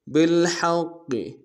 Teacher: حق کو گہرائی سے ادا کرتے ہوئے قاف کے سامنے آئیں گے، شدہ زور دیں گے